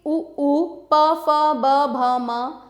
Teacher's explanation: दोनों होठों से उ प फ ब भ म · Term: ओष्ठय